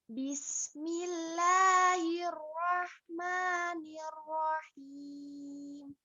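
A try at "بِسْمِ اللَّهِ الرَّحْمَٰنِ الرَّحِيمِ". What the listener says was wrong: Oke. Sip, sudah lumayan.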